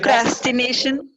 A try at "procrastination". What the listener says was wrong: Ma'am, you didn't put emphasis. Look at the stress mark. Where is the stress mark, ma'am?